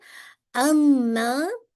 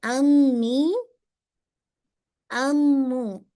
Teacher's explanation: दोनों होठों के बाहर के जो ड्राई हिस्सा है, उसको आपस में नरमी से मिलाने से होता है। ठीक है, यानी इसको आप बहुत स्ट्रांगली नहीं मिलाते।